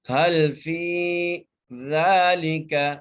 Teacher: ذال کو ایک الف مقدار کھینچ کے پڑھنا ہے